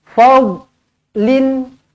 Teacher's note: Sekali lagi saya beritahu huruf dot jangan melantun. Jangan kita baca dengan fadl.